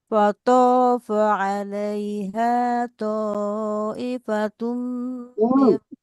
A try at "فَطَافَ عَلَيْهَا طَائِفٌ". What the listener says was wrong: Bunda nggak pakai ifatum ya, ta'ifum.